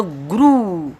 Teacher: तो गुरु की आवाज़ में रू की आवाज़ को खींचा जाएगा और जो गु की आवाज़ रहेंगी उसको शॉर्ट पड़ा जाएगा।